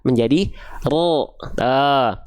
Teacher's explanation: vokal a Bang kayak fathah vokal a tipis is dong ra Maka angkat pangkal lidahnya yang asalnya ra menjadi ro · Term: huruf tebal